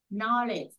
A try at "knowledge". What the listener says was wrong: Chữ chờ đằng sau á chị, cái chữ chờ. Chữ chờ mạnh lên. À, chữ chờ nè, chữ chờ, chị nghe em đọc nè.